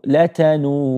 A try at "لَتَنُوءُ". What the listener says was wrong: لَتَنُوءُ. There's a hamza on the end. لَتَنُوءُ.